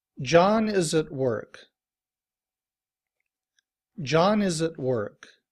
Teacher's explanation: At, in reduced form, uses the schwa, and so the schwa plus the T sounds like ut.